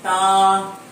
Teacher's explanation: تا کا مخرج زبان کی نوک اور ثنایا علیہ کی جڑ. زبان کی نوک ثنایا علیہ اوپر والے دانتوں کی جڑ میں لگتی ہے